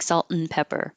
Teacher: any two things can be reduced to just a n in the middle